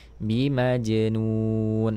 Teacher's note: huruf Jim berharakat sukun maka Munculkan sifat qalqalahnya